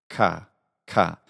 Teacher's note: This letter is pronounced in the ancient and classical way as a velar unvoiced plosive followed by a bit of aspiration. So it's the combination of ka plus ha.